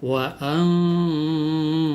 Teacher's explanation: Bacaan ikhfa tentu saja samarnya itu, dengungnya itu harus dibaca 2 sampai 3 harakat.